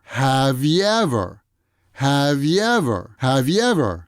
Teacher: So here too, the V sound at the end of have is going to move over and connect with the Y sound of yever.